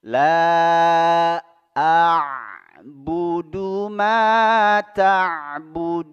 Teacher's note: La a'budu Yang pertama hamzah, yang kedua huruf ain yang disukun. Hamzah di tenggorokan bagian bawah, kemudian naik di huruf ain. Ya, yaitu tenggorokan bagian tengah.